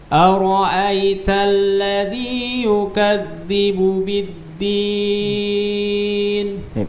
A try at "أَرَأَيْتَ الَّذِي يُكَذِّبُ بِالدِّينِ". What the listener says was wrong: Zalnya يكذب.